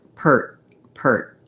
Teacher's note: there is a stopping of the air my tongue does close off in the front